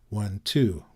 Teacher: an unstressed followed by a stressed syllable is called an I am and it has the Rhythm one